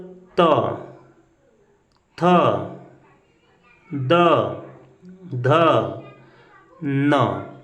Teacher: त वर्ग का उच्चारण स्थान दंत होता है, अर्थात ये दांत को कहीं न कहीं हमारी जिह्वा स्पर्श करेगी तभी बोले जाएंगे